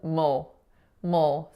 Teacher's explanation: That third syllable is mul, mul. So it's M, schwa, dark L. The schwa and dark L really combined to almost make one sound, ol, ol.